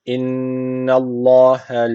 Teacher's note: Mutlaka bir elif tutmamız gerekiyor. Allah lafzı kalın okunacak çünkü öncesindeki harf üstten bağlanmış.